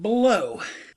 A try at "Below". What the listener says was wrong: Below, not blow.